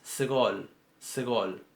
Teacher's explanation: el sonido es tan breve que casi parece que pongo la S y la G juntas, como si hubiera escrito sgol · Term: E breve